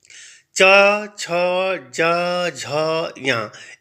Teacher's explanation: झ ञ ये हमारे जो है वह तालू से संबंधित है इनको अगर हम उच्चारित करते हैं तो हमारी जो जीवा है वह हमारे तालू से टच होती है स्पर्श होती है